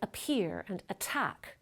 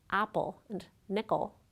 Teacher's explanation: In words like appear and attack, the voiceless stop isn't the first sound in the word, but it comes at the beginning of a stressed syllable, so it gets aspirated. But in the words apple and nickel, the voiceless stop comes after a stressed syllable and before an unstressed syllable, so it doesn't get aspirated.